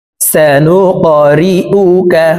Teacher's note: কফ কলকলার হরফ উপরের দিকে ধাবিত করে ধাক্কা দিয়ে উচ্চারণ করব